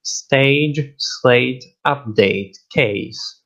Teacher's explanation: the a diphthong is pronounced equally in rp and ga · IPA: [eɪ]